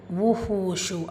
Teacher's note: ஹூல வாவ் மத்தா இருக்குது, 2 ஹரக்கத்தில் நீட்டம் கொடுக்கணும். 2 இடங்கள்லையுமே ஷீன் இடம் வச்சிருக்கு.